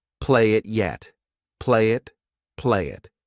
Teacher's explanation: We can combine play and it together. I'll take that Y and I'll use it to connect.